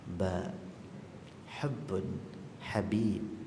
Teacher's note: Ba ni kalau nak sebut, dia ada dua bibir kita ni, bibir kasar, bibir lembut. Makhraj yang paling tepat bagi ba bukan bibir kasar, tapi pertemuan dua bibir lembut.